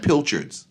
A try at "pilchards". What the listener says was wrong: Pilchards. Okay. Don't say the D.